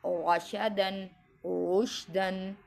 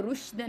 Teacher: جب را پہ زبر لگی ہوئی ہو یا را پر پیش لگی ہوئی ہو تو را موٹی پڑھی جائے گی، پر پڑھی جائے گی